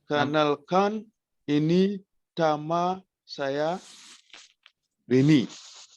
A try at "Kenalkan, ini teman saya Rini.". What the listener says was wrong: Can you say teman, not tema, but teman? Kenalkan, ini teman saya Rini. Not tema, but teman.